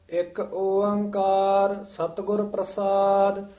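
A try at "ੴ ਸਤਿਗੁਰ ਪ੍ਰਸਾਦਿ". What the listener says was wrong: एक ओंकार कठा नहीं बोल देना, एक ओंकार सतगुर प्रसाद,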